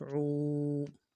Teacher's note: واو مدہ ہے، ایک الف دال میں کھینچیں گے۔ عین واو پیش عو، عو قعو، دال دو پیش دون، تنوین ہے غنہ کرنا ہے۔